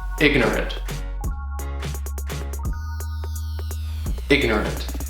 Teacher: The word ignorant has three syllables. And the stress is on the first syllable. · keep in mind that the third syllable has the schwa or /uh/ sound